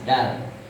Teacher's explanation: Kalau dal makrojnya ujung lidah ke pangkal gigi seri atas, dal. Kalau dot itu adalah tepi lidah mengarah ke gigi geraham.